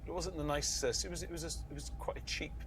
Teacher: an accent that is much more sing-songy in nature than other british english accents it's almost musical in its intonation